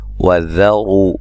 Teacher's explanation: ذال کو نرم، رو را کو موٹا، و مدہ ہے